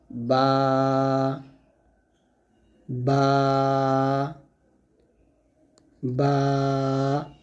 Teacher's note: বাটা অবশ্যই 2 ঠোঁট মিল করে ঠোঁট থেকে উচ্চারণ করতে হবে সুন্দরভাবে,